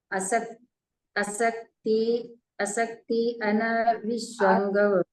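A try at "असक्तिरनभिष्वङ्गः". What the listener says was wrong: असक्तेरन र है ना, असक्तेरन विश्वंग।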